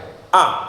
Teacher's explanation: tegas mandek tidak ada sisa suaranya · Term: Siddah